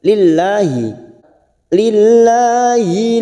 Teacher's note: lam jalalah yang didahului kasrah kita baca tarkik